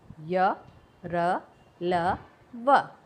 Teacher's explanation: इनका उच्चारण में वायु का अवरोध बहुत कम समय के लिए होता है। इन व्यंजनों के उच्चारण में जीभ जो है मुख के किसी भी भाग को पूरी तरह से स्पर्श नहीं करती है, यानी कि बिल्कुल भी टच नहीं करती है। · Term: अंतःस्थ व्यंजन